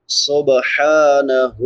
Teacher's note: سین سیٹی والے حروف میں سے ہے، سیٹی کے ساتھ ادا کریں گے۔ سبحانہ، حا چھوٹی حا ہے، حلق کے درمیان سے ادا ہوتی ہے جہاں سے عین ادا ہوتی ہے۔